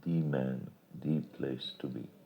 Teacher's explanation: So uh the man means the only man who is meant the place to be means it is one of the best places to be. Note that in spoken English this use of the is accented to show its force.